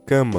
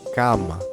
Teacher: Sempre um som de A, nunca um som nasal, anasalado.